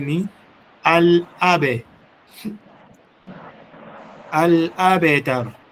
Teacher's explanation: So ni abe wala sio abi, sio kaika kasra, ni makosa makubwa.